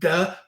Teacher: Buh, my lips are popping, that's this one. Duh, my tongue is tapping, that's the D